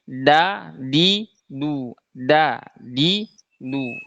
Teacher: Huruf dal itu dia makhrajnya di ujung lidah bertemu dengan ujung gigi seri atas. Nah, biasanya kesalahan yang sering terjadi huruf dal itu kalau di Indonesia kan da-nya huruf da itu nempelnya ke langit-langit tuh.